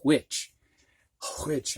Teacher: you do kind of very softly hear a breath with the h sound